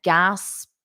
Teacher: notice this pronunciation of gasped because it's a very soft T at the end